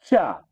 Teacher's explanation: जीभ आपकी ऊपर तालू में टकरा रही है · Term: चा वर्ण